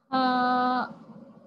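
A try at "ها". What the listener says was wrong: माशाल्लाह।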